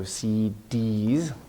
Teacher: more stress on the last part of an abbreviation